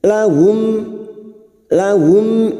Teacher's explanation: dengan dua huruf ini maka mim sukun dibaca jelas seperti ini mim sukun bertemu Hamzah dibaca jelas tanpa mendengung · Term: Idhar syafawi